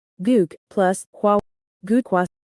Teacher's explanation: The consonants giyunk and hiut collide, so they are merged and pronounced as kiyuk. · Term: consonant abbreviation